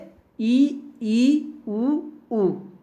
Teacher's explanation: जिन स्वरों का उच्चारण करते समय मुख बंद होता है, उच्चारण करते समय मुख बंद हो रहा है, उसको हम कहेंगे संवृत स्वर